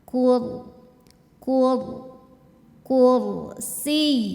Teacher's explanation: rnya tebal karena didahului damah